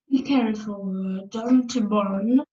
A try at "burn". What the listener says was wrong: Burn, not born. I was born. Burn, don't burn.